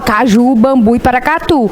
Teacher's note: ela tem tonicidade na última sílaba Sim ela tem acento tônico na última sílaba · Ela tem acento tônico na última sílaba, por isso que a gente fala caju, bambu e paracatu.